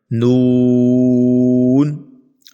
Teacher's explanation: نون کے اوپر بھی مد ہے، اس لیے ہم نے اس کو لمبا کیا 3 سے 4 الف کے برابر